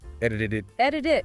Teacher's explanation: flapping happens twice and then it links